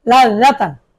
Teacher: জিহ্বার আগা দাঁতের আগা থেকে জাল উচ্চারণ করতে হবে